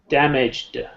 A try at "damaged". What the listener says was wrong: No, there's no E there. Listen to how I say it. Damaged. There's no, you don't pronounce the E.